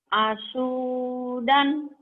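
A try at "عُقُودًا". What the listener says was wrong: Asu salah. Bukan asu itu mah. Salah wae ta tidinya ta. Itu bukan so, ada titiknya.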